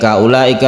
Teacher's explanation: Ulaika itu artinya mereka itu. Ula panjangnya berapa? 2,5 alif untuk mad wajib muttasil